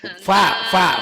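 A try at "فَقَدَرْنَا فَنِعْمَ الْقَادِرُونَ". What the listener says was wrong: fa. mulutnya tadi wa kedengarannya. Fa, mulutnya kedengarannya wa. Kenapa tuh? Mungkin mulutnya kurang dibuka. Jadi kedengarannya kayak wa, fa.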